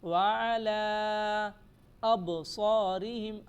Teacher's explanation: با پر قلقلہ کریں گے، با کو تھوڑا ہلا کر پڑھیں گے